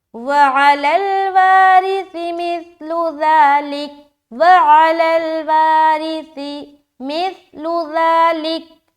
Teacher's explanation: सीटी की आवाज़ कहीं भी नहीं आ रही · रा को हम बारीक रख रहे, क्यों? क्योंकि इसके नीचे ज़ेर है। वा को खींच रहे क्योंकि अलिफ मद्दा का कायदा है।